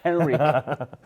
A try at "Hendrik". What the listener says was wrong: For the Spanish people, it must be Hendrik. Can you say D? Hendrik. Hendrik. Well, it's easy, but Hendrik is difficult for you.